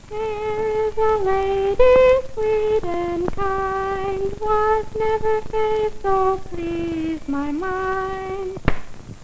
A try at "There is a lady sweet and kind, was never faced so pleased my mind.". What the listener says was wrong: your voice sounds thin because it's not resonated properly. It sounds nasal like this. There is a lady sweet and kind. Now if you can keep open up here and use all your resonators, it'll sound more like this. There is a lady sweet and kind.